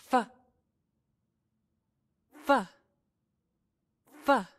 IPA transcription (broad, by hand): f